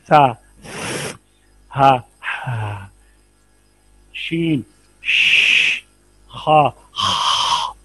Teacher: दो ही चीजें हैं ना जहर में, एक बुलंदी और कुव्वत और दूसरी सांस बंद हो जाए। हमस में क्या है, पस्ती या जोफ और सांस जारी रहे